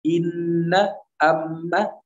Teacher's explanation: dia bertasydid, maka tingkatan gunnah yang paling tinggi